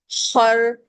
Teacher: असल जो गन का साउंड है वह है ग ख ग दूसरा लेटर जो हमारे अपर थ्रोट से पढ़ा जाता है वो है खर्राटा लेते हुए कभी किसी को सुना है रात को नींद में खर्राटे ले रहे होते हैं खर तो वो खर्राटे की आवाज ख पढ़ते हुए आती है आपका हलक रगड़ता है ख पढ़ते हुए खर्राटे की आवाज का आना बहुत जरूरी है। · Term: फ्रिक्शन